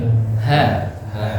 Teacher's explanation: Tempatnya di pangkal tenggorokan, bukan di dada.